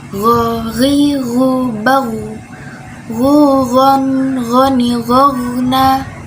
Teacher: Gho itu makrojnya ada di tenggorokan paling ujung, ya, dan dia sifatnya jahar atau tidak mengalir nafas. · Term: huruf gho